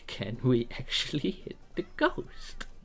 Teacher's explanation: with the way I said ghost at the end there, there was like this minor bit of ejection, which is one way of saying things, which is like adding a adding an adjective to it, which is like this extra puff of air, but it's not a mandatory thing.